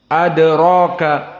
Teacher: adraka di sini dalnya muraqqaqah dan qalqalah as-sughra